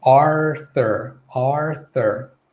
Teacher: With the American accent, they'll enunciate that R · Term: R sound